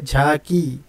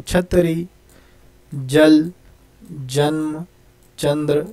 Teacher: तो देखिए दोस्तों, तालव्य वर्ण यानी ऐसे वर्ण जिनका उच्चार करते वक्त हमारी जो जीभ है, जो हमारी ज़ुबान है, वो अंदर खींच करके हमारे तालु को स्पर्श करती है, उन्हें तालव्य वर्ण कहते हैं।